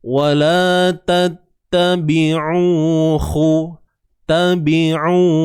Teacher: Wala tattabi'u, huruf ba baris bawah B, huruf ain ni kita sempitkan di bahagian tengah kerongkong kita untuk mendapatkan hasil bunyi yang baik